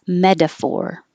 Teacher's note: The T changes to D.